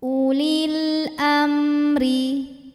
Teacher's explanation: Alif lamnya dinamakan dengan alif lam qamariyah karena alif lam menghadapi huruf qamariyah yaitu hamzah, maka lam sukun dibaca jelas.